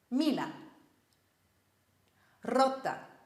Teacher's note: the imperative gets the stress on the second last syllable